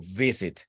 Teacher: la V y la F son misma posición de los articuladores, labio inferior contra dientes, eso es, una fricción allí. Pero la diferencia es que con V hay uso de voz, con la F no, simplemente aire.